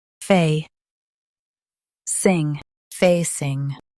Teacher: Stress fay and keep sing light.